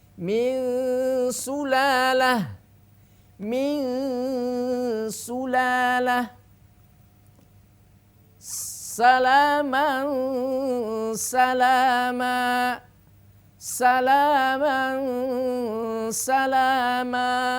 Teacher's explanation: Sin adalah huruf tipis atau tarqik maka ingat ghunahnya pun harus tarqik apapun harakatnya · Sin itu huruf tipis maka tipiskan gunahnya dengungnya tipiskan